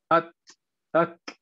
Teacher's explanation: تا اور کاف جو ہے اس کے ساتھ ات اک تھوڑی سی ہمس کی آواز آنی چاہیے